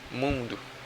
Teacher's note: é um som de um U meio nasalizado. Por isso que é como se fosse um U com tio.